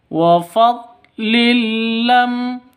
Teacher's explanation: tanwin bertemu dengan lam cara bacanya masuk ke lam tanpa dengung ya masuk ke lam tanpa deng dengung karena idgham bila ghunah